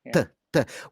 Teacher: What you're doing is the tip of your tongue is coming up hard against the back of your teeth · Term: Indian T